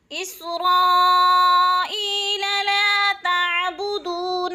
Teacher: اسرائیل لا تعبدون، لا پہ الف مدہ، تعبدون، بدو پہ وہ مدہ، دونوں کو الف مدہ کو بھی اور وہ مدہ کو بھی ایک الف کے برابر کھینچ کر پڑھنا ہے۔